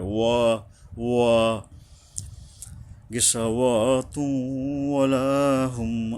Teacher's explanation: দুই ঠোঁটের মাঝখান দিয়ে যেমন উপরে আর নিচের ঠোঁট কিছুটা গোলাকার হয়ে আসবে